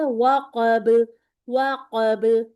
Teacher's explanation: واق پہ راؤنڈنگ کریں، قاف کو پر پڑھیں، وقب. با پہ پہلے انگلی رکھ لیں، قاف ادا کر لیں اچھا سا، پھر با کو ادا کریں.